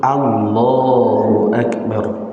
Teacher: Maka kata a gak boleh panjang harus Allah.